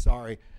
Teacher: When I was a kid in Oxford, the word sorry was such a common form of expression. It was almost pronounced as one syllable. It was just a polite noise that people made in social situations.